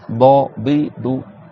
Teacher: c'est le côté de la langue qui vient taper et tamponner sur les molaires, sans que ça touche le bout de la langue, et le bout de la langue, il frôle un peu le haut de la bouche. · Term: dod